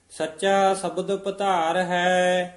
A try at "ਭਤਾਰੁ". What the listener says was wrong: ਪਧਾਰ ਨਹੀਂ ਕਹਿਣਾ, ਧੱਦਾ ਨਹੀਂ ਹੈ, ਤੱਤੇ ਦਾ ਉਚਾਰਨ ਕਰਨਾ ਹੈ। ਸੱਚਾ ਸ਼ਬਦ ਭਾਤਾਰ ਹੈ।